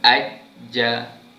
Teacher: 3 huruf ini berada di tengah-tengah lidah, yang mana kita nak keluarkan atau menyebut huruf 3 huruf ini, perlu tengah lidah kita naikkan ke langit-langit keras belah atas. Contoh huruf jim.